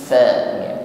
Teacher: Sebelum fa terucapkan ada aliran nafas ya, hamas. Fa, makhrajnya ujung gigi bertemu bibir bawah. Ada nafas yang mengalir saat mengucapkannya.